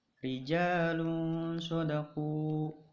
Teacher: Nah, pembacaannya samar, tidak ke ijhar dan juga tidak ke idgham. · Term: ikhfa